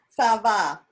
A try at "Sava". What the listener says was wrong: Good job.